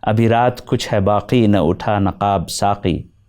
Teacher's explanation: the fourth signature Urdu sound, qa, is produced lower in the throat.